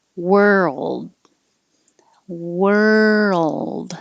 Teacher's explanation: take time to move from the r position to the l position